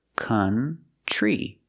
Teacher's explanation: Country. And we see the TR makes a ch-ch sound like chicken plus the R, tree. Together, country.